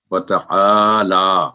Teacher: تو واو single sound, تا single sound, آ کی آواز 2 سیکنڈ لمبی، اور لام پر کھڑی زبر ہے تو وہ بھی 2 سیکنڈ بعد لمبی ہوگی